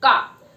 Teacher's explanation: का velar sound है, जिसमें जीभ के पीछे का हिस्सा ऊपर के तालु, सॉफ्ट पैलेट को टच करता है और बोलता है का।